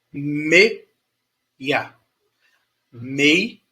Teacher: Meia, ó, comecei forte, vou pro fraco. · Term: decrescente